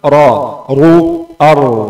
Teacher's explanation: Itu alasan yang tebalkan suara ra dan lam. Ada cekungan di tengah lidah. Ini yang buat suara ra tebal.